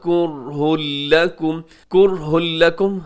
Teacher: یہاں را ساکن ہے کرہن میں اور را ساکن سے پہلے پیش ہے تو را تو موٹی پڑی جائے گی، اس کے بعد کرہ لکم میں ہاں کے اوپر تنوین کے بعد آگے لام ہے، ادغام یہاں پر ہوگا لیکن بغیر غننے کے ادغام ہوگا۔